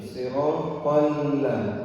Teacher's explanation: Jadi jangan sampai lamnya menjadi tebal